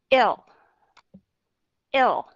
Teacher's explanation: Chúng ta đều không làm hai cái điều đó. Chúng ta chỉ có cho cái đầu lưỡi lên, chạm vào cái chân răng, cái hàm răng ở phía trên. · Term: âm L